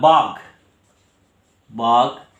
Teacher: ঘটা হচ্ছে মহাপ্রাণ, এটা অল্প প্রাণে এলো গ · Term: অল্প প্রাণী ভবন